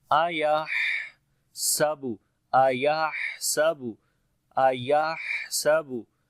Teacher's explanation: हा के अंदर सिफ्त हमस होगी, सांस जारी होगा